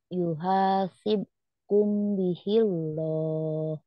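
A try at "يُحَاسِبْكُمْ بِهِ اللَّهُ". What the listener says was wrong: yuhasibkum bihillah, bukan bihiloh ya.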